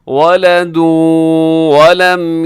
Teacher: تنوین کے بعد واو آیا ہے تو ادغام غنے کے ساتھ